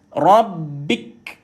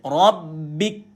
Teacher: Ra sabdu, tahan dah, lepaskan ba, matikan kaf. Bila matikan kaf ini berhenti, kita kena nyatakan sifat dia iaitu angin keluar, itu hams.